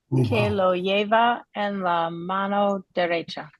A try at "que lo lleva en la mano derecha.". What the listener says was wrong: Bien, ¿sí?